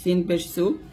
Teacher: মাখরাজ হলো জিহ্বার আগা সামনে নিচের দুই দাঁতের মাঝে লাগিয়ে সিনটা আপনাকে উচ্চারণ করতে হবে।